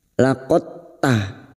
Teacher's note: Bertemunya 2 huruf yang sejenis makhrajnya. Sifat qalqalah dari huruf dal ini hilang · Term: idgham mutajanisan